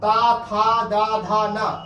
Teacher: अगर पूछ लिया ना का उच्चारण स्थान बताइए तब क्या करेंगे, ठीक है ना, तो ता था दा धा ना इसमें आ जाएगा, तो ये दंत से हो जाएगा, यानी इसका उच्चारण जो है ना का उच्चारण दंत से होता है।